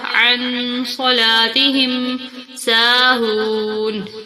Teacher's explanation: نون کے بعد غنہ ہوگا کیونکہ اس کے ساتھ صاد ہے · سین کو تھوڑا کھینچ کے پڑھیں گے کیونکہ اس کے ساتھ الف ہے